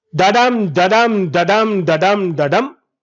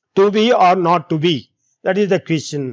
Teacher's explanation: 1 unstressed syllable followed by 1 stressed syllable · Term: iambic